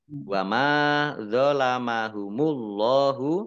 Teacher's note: Allahnya dibaca tebal karena harakat di depannya dummah · Wa ma dzalamahumullahu mim fathah alif matobi'i panjang 2 harokat. Allahnya dibaca tebal karena harokat di depannya dhammah. Lam fathah berdiri matobi'i panjang 2 harokat.